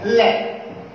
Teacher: देखो ल का उच्चारण करते हैं तो हमारी जिह्वा मसोड़ों के पास या तालव्य के पास आकर रुक जाती है या लग जाती है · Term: पार्श्विक व्यंजन